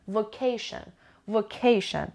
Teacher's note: it has three syllables and the stress is on the second syllable